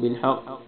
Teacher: حق قاف کو موٹا پڑھنا ہے